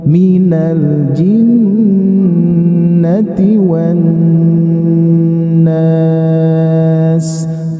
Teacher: Nada yang ketiga turun. minal jinnati wan nas turun.